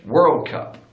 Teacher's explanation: But in American English, they put the stress on the first word.